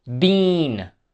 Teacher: starts with your mouth extending out sideways and producing the sound for a longer time